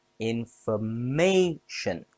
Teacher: Information has 4 syllables. Stress on may.